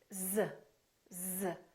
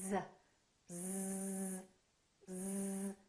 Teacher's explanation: z is a voiced sound we're using our vocal chords